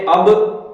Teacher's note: با دونوں ہونٹوں کے آپس میں ملنے سے یہ ادا ہوگا